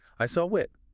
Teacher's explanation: it naturally connects that aw sound to the I in it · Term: bridge sounds